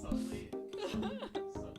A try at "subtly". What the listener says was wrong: Subtly. Is it because you try to pronounce the B? You're like subtly.